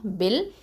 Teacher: அடுத்தது பாருங்கள், ப கெசரா லாம் சுக்கூன் பில், இடையில இருக்கக்கூடிய ஹம்சத்துல் வசல் உச்சரிக்க மாட்டோம்